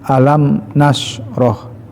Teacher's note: Cara membaca tidak ditahan ya, karena idhar syafawi ya, idhar jelas syafawi bibir, karena mim huruf bibir, huruf asyafatain ya.